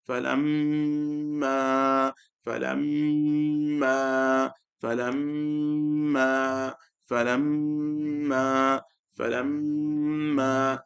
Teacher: we're trying to read it with extra ghunnah, just to get them to the habit of doing the ghunnah correctly. Now they're doing a deeper ghunnah than normal.